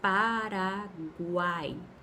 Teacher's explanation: Eu tenho uma semivogal, uma vogal e outra semivogal numa mesma sílaba. Então, é encontro de três vogais em uma mesma sílaba. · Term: tritongo